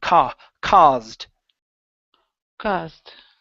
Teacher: instead of caused with an ow sound this is an a sound C caused caused there you go good good so uh a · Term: ah sound